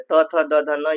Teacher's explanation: त वर्ग में त, थ, द, ध न ये दंत से है